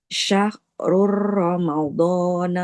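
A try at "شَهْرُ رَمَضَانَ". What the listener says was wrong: masih ditekan. Jangan syahrur. Syahrur Ramadan.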